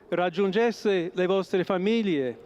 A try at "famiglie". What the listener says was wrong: Interesting the way he said famiglie with an L. So there are three ways to pronounce this GL in Italian. Either you pronounce it like it's supposed to be, which is famiglie. That's how it's supposed to be pronounced. Or you pronounce it in the southern way, which is a Y, famiglie, with a Y.